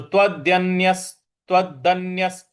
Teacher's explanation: य के बाद जो विसर्ग है उसके आगे स है तो इन दोनों को आपस में जोड़ देंगे